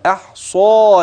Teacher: الحاء الصاد والالف بعدها مفخمه تبعا للصاد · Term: التفخيم, مفخمة